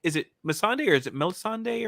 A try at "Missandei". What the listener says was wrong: Missandei. There's no L, I don't think.